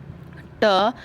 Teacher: ट जीवा ऊपर वाले, जो मुंह के ऊपर वाले स्थान का स्पर्श करती है, तो इसका उच्चारण स्थान मूर्धा है।